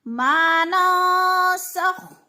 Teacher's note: نون ساکن کے بعد سین حروف اخفا میں سے ہے تو ادھر غنہ کریں گے یعنی اخفا کریں گے، ناک میں آواز لے جائیں گے · خا موٹے لفظ میں سے ہے، پر کر کے پڑھیں گے